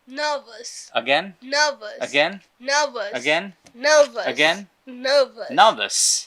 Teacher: এখানে দেখো এই যে র এর পরে কিন্তু একটা কি আছে, ভ আছে। র এর পরে যদি ভ থাকে, ভটা একটা কনসোনেন্ট সাউন্ড, তাহলে ব্রিটিশ ইংলিশে কিন্তু রটাকে আর তারা উচ্চারণ করবে না, রটাকে তারা সাইলেন্ট রেখে দেবে।